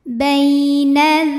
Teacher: ada ya sukun yang sebelumnya berbaris fathah maka dibacanya cukup kita lembutkan atau kita lunakan saja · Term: huruf Lin